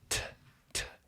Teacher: my tongue goes up to my teeth and blocks the air from coming out. Yeah. And when I pull that, I release the air, and it comes out.